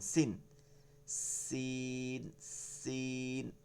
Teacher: সিরসির করে এবং আওয়াজটা হচ্ছে চিকন